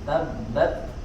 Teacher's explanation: bertahan lidah kita di makhrajnya suaranya kemudian keluarkan angin sedikit tabbat jadi tidak langsung dikeluarkan sempurna worksnya dia dikuat dulu ya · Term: sifat hams